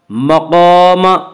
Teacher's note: قاف کو پر پڑھیں گے، قاف حروف مستعلیہ میں سے، حروف مستعلیہ 7 ہیں جن کا مجموعہ خصہ ضغط نقض ہے جو ہمیشہ ہر حال میں پر پڑے جاتے ہیں۔